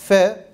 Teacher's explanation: Üst dişin alt dudağın karnı diye tabir ettiğimiz iç tarafına temasıyla çıkar. F harfidir.